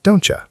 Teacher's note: But in fast speech, the T and Y blend together and become a ch sound. So it sounds like don'tcha. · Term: assimilation